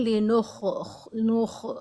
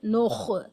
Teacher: ख को तफम के साथ मोटा पढ़ेंगे नोख ख के ऊपर जब जबर या पेश होता है तो